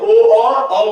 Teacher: कंठ और ओठ आपस में मिलके काम करेंगे तो ओ और औ है